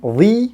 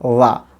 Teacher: উই যদি বলি তাহলে সেটা লং সাউন্ড আছে একটা শেষে উই, এবং এটা স্ট্রং ফর্ম, আর উইক ফর্মে হচ্ছে গিয়ে লা, লা। সো THE উই অথবা লা।